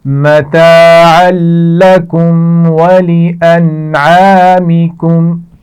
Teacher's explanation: نون پر جزم ہے اور اس کے بعد عین آ گیا حروف حلقی میں سے تو یہاں پر غنہ بھی نہیں کیا جائے گا